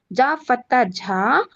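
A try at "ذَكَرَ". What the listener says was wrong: First letter తప్పు చదువుతున్నారు. లేదు దాల్ జాల్, దాల్ జాల్, జాల్ ఫతా జా, కాఫ్ ఫతా కా, జకా. జాల్.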